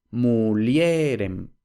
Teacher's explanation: ahora tenemos que el acento recae en la vocal en el elemento vocálico puramente vocálico del diptongo porque la i no deja de ser una es decir deslizante · Y ahora, donde antes teníamos el acento en li, porque la E es breve, entonces regla de la penúltima sílaba, ahora tenemos que el acento recae en la vocal, en el elemento vocálico, puramente vocálico del diptongo, porque la I no deja de ser una yod, es decir, una deslizante, no es puramente vocálico, por tanto el acento tiene que recaer en el elemento puramente vocálico. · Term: cambios acentuales